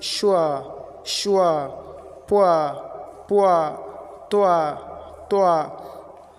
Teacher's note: U and schwa sound. So starting on the U sound and finishing on the schwa sound